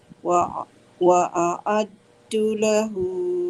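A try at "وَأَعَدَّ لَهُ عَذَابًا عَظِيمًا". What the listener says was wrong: Wa a'adda. Baris atas.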